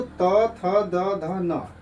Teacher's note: त, थ, द, ध, न। इनका उच्चारण स्थान क्या है? ये दंत से बोले जाते हैं। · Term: दंत्य